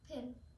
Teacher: Pin starts with an aspirated stop, which means a puff of air accompanies the p sound.